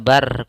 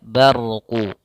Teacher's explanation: huruf ra tidak dibaca bar tapi dia barqu rnya tebal